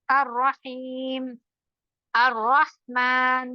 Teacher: رو مشدد ہے، تشدید کے ساتھ ہیں تو ڈبل پڑھا جائے گا، لیکن زیادہ نہیں کرنا ہے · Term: مشدد والا رو